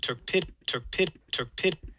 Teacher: he doesn't release that K at the tail end. He goes, there's a closure. You can't hear it. And then he goes to the P right after it.